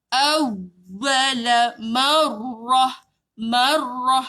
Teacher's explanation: Bayangkan kita sebut 2 waw. Waw 1 mati, waw kedua baru ada baris. Jadi tahan dulu baru lepas.